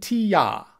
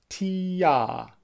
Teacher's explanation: As you say T-ya, your tongue starts high and then it drops down low. T-ya. Try it with me.